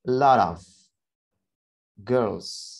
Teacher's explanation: bisa kita flapkan suara t pada kata lot tersebut menjadi suara d